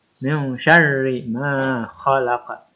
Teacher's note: Pada ayat kedua, pertama itu ada hukum bacaan ikhfa. Karena ada nun mati atau nun sukun bertemu dengan huruf shin atau huruf ikhfa. Maka dibaca samar.